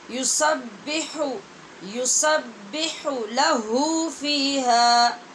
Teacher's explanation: یسبح میں ہا وسط حلق سے ادا ہونے والی ہے اور لاہو میں انتہائی حلق سے